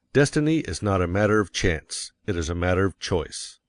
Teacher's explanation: And you will put some emphasis on not, else your hearers may think you are affirming that destiny is a matter of chance. By all means, you must emphasize chance, for it is one of the two big ideas in the statement. Another reason why chance takes emphasis is that it is contrasted with choice in the next sentence. · you will want to emphasize destiny, for it is the principal idea in your declaration. And you will put some emphasis on not, else your hearers may think you are affirming that destiny is a matter of chance.